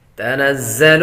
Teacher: زا حروف صفیریہ میں سے ہے یعنی سیٹی کی آواز آئے گی